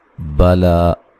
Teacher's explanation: لام کے اوپر جو کھڑی زبر ہے اس کو ایک الف کی مقدار کے برابر لمبا کیا جائے گا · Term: مد اصلی